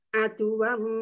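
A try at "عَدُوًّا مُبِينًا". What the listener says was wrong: Adu wawunya ditekan dobel ya. Adu wam mubina.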